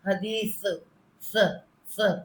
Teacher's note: حدیث نہیں کہنا، سین نہیں بنانا، اس کو سا کرنا ہے. حدیث جب یہ سا نکلے نا تو آپ کے سامنے کے دانتوں سے تھوڑی سی ہوا بھی نکلے